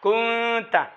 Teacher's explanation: একফা করার সময় নাকের ভিতর থেকে আওয়াজ বাইর হবে, একালিবার দেরি করবে, জিব্বার আগাটা উপর তার সাথে লাগবে না, আলগা আলগা থাকবে, নাক থেকে আওয়াজ আসবে, একালি বরাবর দেরি করবে। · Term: একফার গুণ্য